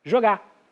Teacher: jogar e apagando o R final